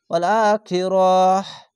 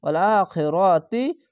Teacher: যদি থামেন তাহলে হা হবে, আর যদি না থামেন, যদি মিলিয়ে পড়েন তাহলে তা হবে। এখানে থামবো, থামা ভালো, তার জন্য হা পড়তে হবে।